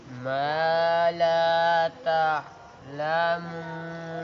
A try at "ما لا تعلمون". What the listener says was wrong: नाक में ना पढ़ो ما لا تعلمون. إنما يأمركم بالسوء والفحشاء وأن تقولوا على الله ما لا تعلمون. إنما يأمركم بالسوء والفحشاء وأن تقولوا على الله ما لا تعلمون.